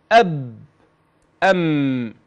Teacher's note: يأتي الباء أعني الحرف والميم بانطباق الشفتين